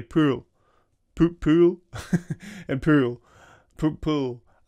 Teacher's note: unlike in American English where pull has a slightly different pronunciation than pool, in a Scottish accent both words sound like pool.